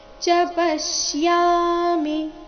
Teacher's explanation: ಚ ಪಶ್ಯಾಮಿ ಚ ರಸ್ವ ಬರಬೇಕು ಅಂದ್ರೆ ಮುಂದಿನ ಶಬ್ದ ಅದಕ್ಕೆ ಜೋಡಿಸಿ ಹೇಳಬೇಕು.